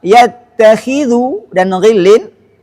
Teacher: huruf kha dan ghain yang berharakat kasrah seperti kata yattakhidhu dan ghillin memiliki tingkatan ketebalan yang rendah